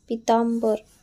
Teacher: पितांबर चा उच्चार करताना म या अनुनासिकेचा उच्चार होतो